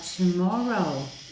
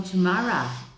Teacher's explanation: Por exemplo, mais para cima na Escócia, em vez de falar tomorrow, né, com um som assim, eles falam tomorrow e abre mais o som e continua sendo a mesma palavra, mas é pronunciado bem diferentinho.